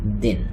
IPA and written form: din (and encourage)